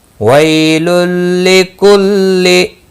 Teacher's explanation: وَي یالین ہے، تھوڑا نرمی سے کھینچ کر ادا کریں گے